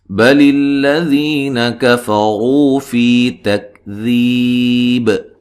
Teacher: کفروا کاف کو باریک، را کو موٹا ادا کرنا ہے